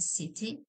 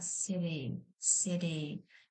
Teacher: Flap T дегеніміз it sound like D. Яғни д дыбысына ұқсас кішкене.